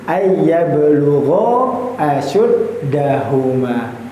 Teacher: Boleh 2, tapi alangkah baiknya 4 sampai 5 harokat. Ayyablugha panjang ya. Tidak pendek bacaannya, tidak hanya 1 harokat, tapi ya minimal sekali itu dibaca sebanyak 2 harokat